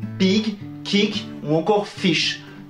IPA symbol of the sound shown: ɪ